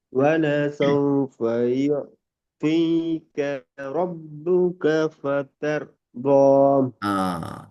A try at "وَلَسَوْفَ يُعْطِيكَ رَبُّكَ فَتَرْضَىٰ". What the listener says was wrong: இப்ப அந்த வித்தியாசம் யுஅ்தீக ரப்புக ஃபதர்தா. யுஅ்தீக. அப்ப அந்த ஐன் உச்சரிக்கப்படுது கலக்காம பெரிய துவாவை தீக்கு ஐ ஃபுல் அடுக்கணும். திரும்ப ஃபதர்தா. ஃபதர்தா அந்த ஓதல் சரி, மிச்சம் நல்ல ராவை கலக்காம எடுக்கிறோம். எங்கட டோன்ல இருந்து அது தூரமாகுது, அது பிள்ளை. ஃபெதர் ஓ, அந்த அந்த எங்க டோன் வந்து உடப்படுது. அதாவது உங்களோட கெசுவலா இருக்கிற டோன் உடப்படப்படாது.